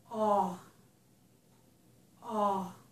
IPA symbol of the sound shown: ɔ